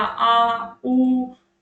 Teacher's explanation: फिर है आपके पार्श्व स्वर, जिसमें जीभ का पिछला भाग काम करेगा।